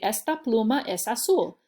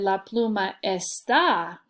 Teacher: And you'll notice I'm saying esta, like the E gets kind of my emphasis or my punch